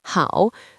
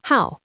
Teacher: when this character means to be fond of or to like, it is pronounced with the fourth tone